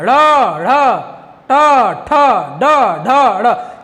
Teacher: तो वे वर्ड मूर्धन्य आते हैं जिनको बोलने में जिह्वा मुड़ती है। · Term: मूर्धन्य व्यंजन